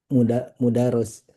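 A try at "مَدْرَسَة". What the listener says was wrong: Bukan mu. Awalnya apa? Mimnya apa? Ma.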